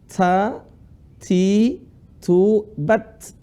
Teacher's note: huruf taa itu ada suara hamasnya suara desis lah